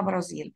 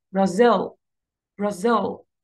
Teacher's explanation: بخطف المقطع الأول تماما وبروح للمقطع الثاني أعمل عليه stress, أوضحه أكتر, أعلي صوتي أكتر, فبيكون هو ده اللي stressed syllable, فبقولها Brazil, Brazil, Brazil, like this.